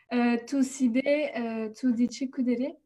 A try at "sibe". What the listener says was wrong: C'est le piège. Quand on voit i, on ne prononce pas i. On l'ignore carrément.